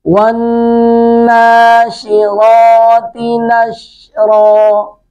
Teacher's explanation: نون مشدد پہ ونّا غنہ کریں گے۔